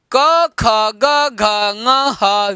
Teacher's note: अ आ क ख ग घ ङ ह और विसर्ग का उच्चारण स्थान कंठ है